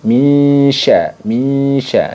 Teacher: Jadi ke makhraj, lupa, ke makhraj huruf setelahnya. Jadi kalau nun sukunnya ini bertemu dengan shin, maka bunyi nun sukunnya tuh disamarkan ke makhrajnya shin. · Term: ikhfa awsat